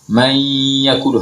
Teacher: kalau nun sukun bertemu dengan ya, mayyakulu, harus didengungkan